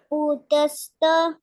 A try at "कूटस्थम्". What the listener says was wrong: It is ku. It is not pu. Kutastha